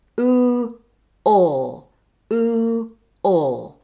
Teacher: the OO in through and OR in thought are very similar, as the tongue stays at the back and the mouth shape is almost the same for both of these long vowel sounds.